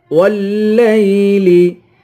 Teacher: واو کو لام سے ملا کر لام کو سختی کے ساتھ جمع کر پڑھیں گے